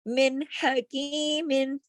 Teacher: کوئی غنہ نہیں ہے، کہیں آواز ناک میں نہیں جا رہی، کچھ نہیں ہو رہا، سیدھا سیدھا اظہار ہو رہا ہے۔ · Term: इजहार हल्की